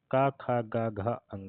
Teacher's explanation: ग का उच्चारण स्थान कंठ होता है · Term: कंठ ध्वनियां